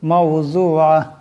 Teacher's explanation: ওয়া আকওয়াবুম মাওযুআ, এখানে জোয়াদ আছে, এই জোয়াদের আওয়াজটাকে মোটা করিয়া পড়তে হবে। আইন আছে, আইনের আওয়াজটি গলা থেকে আনতে হবে